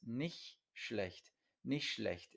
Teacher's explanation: muchas veces cuando se dice nicht antes de otra palabra, se traga la T. Entonces, nicht schlecht, especialmente cuando uno está hablando rápidamente, ¿vale?